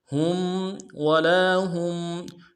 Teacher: ہا کو میم ساکن کے ساتھ ملائیں گے، میم ساکن میں غنہ کریں گے